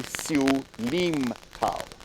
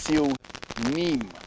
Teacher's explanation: most people say Siu Lim Tao, but it's really Siu Nim with an N. So the N, the name, N-I-M.